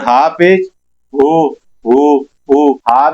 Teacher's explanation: हा लेकिन पेश लगा हुआ है। हंठ गोल हो जाएंगे तो उ बन जाएगा।